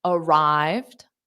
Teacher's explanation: the morning so this follows our pattern arrive is a verb now the Ed doesn't add an extra syllable in this case so it's arrived